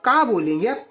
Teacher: आपको बताता हूं देखिए जब आप का बोलेंगे का बोलेंगे तो आपको समझ में आएगा कि आपका जोर कहां पर सबसे ज्यादा पड़ रहा है कंठ पर